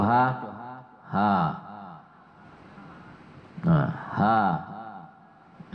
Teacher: Ha huruf tenggorokan tuh. Itu bagian dalam.